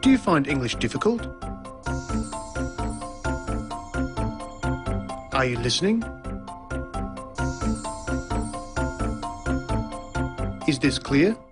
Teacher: the high or rising tone used for asking a yes-no question